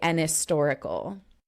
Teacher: the H sound is not very strong · kind of making that H very silent